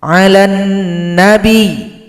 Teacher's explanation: Huruf ya yang tasydid cukup disukunkan lalu ditekan bunyinya.